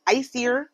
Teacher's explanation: Asir is pronounced ice ear with stress on the first syllable.